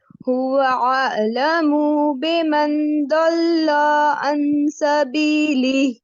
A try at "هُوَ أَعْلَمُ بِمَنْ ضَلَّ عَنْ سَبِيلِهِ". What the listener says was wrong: یہاں آپ کا ضمہ کھینچ رہا ہے اور یہاں پہ آپ کا فتحہ کھینچ رہا ہے, دونوں کو کنٹرول کرنا ہے. هو اعلم بمن ضل. اسپیڈ کو تیز نہیں کریں, اسپیڈ کو سلو ہی رکھیں.